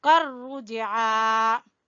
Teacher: جیم کے اوپر ہلکا سا قلقلہ کرتے ہوئے عین کو کھینچیں گے